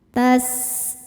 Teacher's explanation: sifat huruf sin adalah shofir yang berarti berdesis seperti suara ular